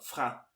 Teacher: você vai pronunciar o fra, o R na garganta aqui